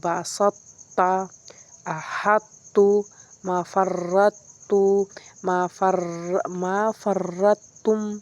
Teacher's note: پہلے طاء کو موٹا پھر طاء کو باریک ادا کریں، اس کو ادغام ناقص کہتے ہیں۔